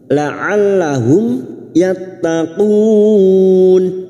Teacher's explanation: mim sukun bertemu ya Idhar syafawi mim sukun dibaca jelas tanpa mendengung